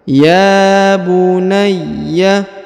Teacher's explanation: huruf ya dibaca 2 harokat karena terdapat alif kecil di atasnya